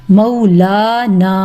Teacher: لام کے اوپر کھڑا زبر ہے، اس کو بھی 2 کاؤنٹ اسٹریچ کر کے پڑھنا ہے